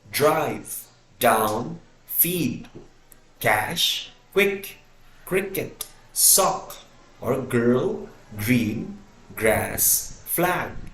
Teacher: is not redirected through the nose instead the air quickly builds up pressure behind the articulators and then releases in a burst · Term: plosives